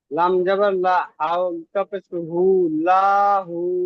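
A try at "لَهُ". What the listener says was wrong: লা টান হবে না ভাই। লাহু, লাহু। আপনার লা টান হয়ে যাচ্ছে, লাহু।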